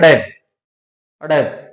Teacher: के साथ क्या है नीचे गिरेगी जब इनका उच्चारण करें तो जीवा एक बार ऊपर की तरफ उठेगी और तुरंत झटके के साथ नीचे गिरेगी · इनका आप उच्चारण करके देखिए जैसे आप बोलोगे अड अड तो जीवा एक बार ऊपर जाएगी लेकिन रुकेगी नहीं वहा तुरंत झटके के साथ क्या है नीचे गिरेगी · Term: उत्क्षिप्त व्यंजन